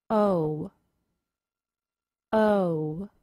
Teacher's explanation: The long O sounds like O. If you listen very carefully to the pronunciation of this sound, you will hear a very brief W sound at the end of it. O O. The long O is a two sound vowel.